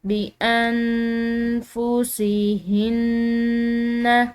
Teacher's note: مشدد نون پر غنہ کیا جاتا ہے، تو یہاں پر ہم غنہ کریں گے۔